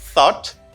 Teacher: The first one is pronounced as thought. It has a voiceless th.